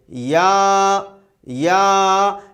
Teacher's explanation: یا کا تلفظ درمیانی زبان اٹھتی ہے تالو کی جانب، لیکن لگتی نہیں ہے تالو سے، تھوڑا گیپ پیدا ہوتا ہے اور اس میں سے یا کی آواز پیدا ہوتی ہے. · یا یعنی زبان اٹھے گی تالو کی جانب، لیکن تالو سے لگے گی نہیں. کافی بڑا گیپ ہوتا ہے تالو اور زبان کے درمیان میں، وہاں سے یہ آواز نکل کر کے آتی ہے